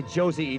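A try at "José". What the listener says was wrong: It's not Josie, it's Jose. In Spanish, J is pronounced like H.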